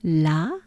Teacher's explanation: a big ah really open exaggerated ah